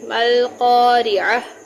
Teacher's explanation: القارعۃ ما القارعہ، یہاں عین کی آواز وسط حلق سے نکلے گی، اور یہاں پر قاف کو پر پڑھیں گے کیونکہ یہ نقطوں والا قاف ہے، اور را کے نیچے زیر ہے، اس کو باریک پڑھیں گے، القارعہ۔ اور اس گول تے کو جب وقف کرتے ہیں تو ہے میں یعنی ہا میں بدل دیتے ہیں، گول تا کو ہا میں بدل دیں گے، القارعہ۔